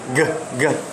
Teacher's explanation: There is a vibration, therefore it is voiced.